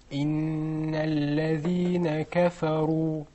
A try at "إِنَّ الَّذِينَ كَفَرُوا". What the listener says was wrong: It needs to be a little fatter. A little more.